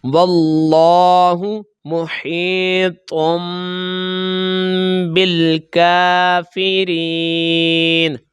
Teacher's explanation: واو کو ہم لام کے ساتھ ملائیں گے، الف لام نہیں پڑھیں گے